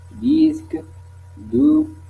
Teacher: Les sons 2, c'est occlusive, apico-alvéolaire, c'est-à-dire la part antérieure de l'alvéole